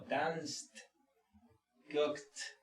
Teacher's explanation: hay que pronunciar primero la consonante y luego al final con un efecto retardado pronunciamos la T